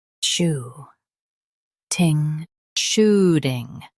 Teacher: Emphasize shoe and keep ting soft.